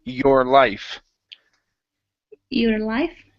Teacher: rolling the r give me a good R sound